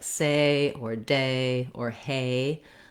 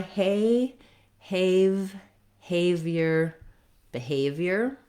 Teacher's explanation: In American English, A glides in two mouth positions, so I have to close as I say the A sound. My tongue lifts and relaxes. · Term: diphthong A